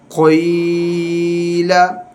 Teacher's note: قوف یا زیر قوی، لام زبر لا، قویلا، اس میں قاف کو پر پڑھیں گے حروف مستعلے میں سے ہے اور یا مدہ اس کو ہم ایک الف کے برابر کھینچ کے پڑھیں گے